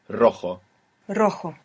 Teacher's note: we have the initial R so if you can do it it will be the rolling r